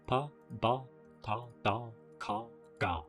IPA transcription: pa, ba, ta, da, ka, ga